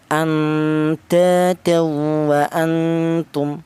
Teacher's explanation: bunyi yang dihasilkan itu berupa huruf NN, bukan N G tapi NN. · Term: ikfa akrab